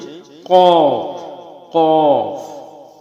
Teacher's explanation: জিহ্বার গোড়া তার বরাবর উপরে তালুর সঙ্গে লাগাইয়া একটি হরফ উচ্চারিত হবে, সেটা হচ্ছে কফ, কফ।